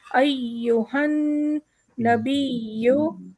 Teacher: नून का भी तशदीद हमें वाज़ेह पढ़ना है, या का दोनों या का भी तशदीद हमें वाज़ेह पढ़ना है।